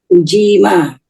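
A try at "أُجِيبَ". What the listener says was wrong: Ujima, bukan mim. Bukan mim. Jaba, ba.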